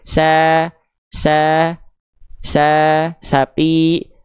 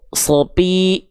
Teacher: Kalau sin agak senyum sedikit karena tipis, sa. Lalu pangkal lidahnya gak naik, makanya vokalnya ringan, vokal A dia